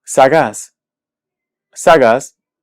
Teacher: si escuchamos esta palabra sabemos que la sílaba tónica es la última es decir es aguda